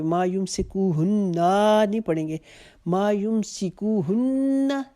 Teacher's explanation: نون کے اوپر چونکہ تشدید ہے تو ایک الف کے جتنا غنہ کریں گے، لیکن نا کو لمبا نہیں کریں گے.